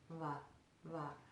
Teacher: in Sanskrit, the V sound is not made like a hard V, like we do it in our English language. It's very soft. So we put the upper teeth on that moist area.